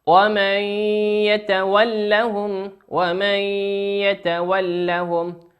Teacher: نون ساكنة أتى بعدها حرف الياء، والياء من حروف الإدغام بغنة يغن بمقدار حركتين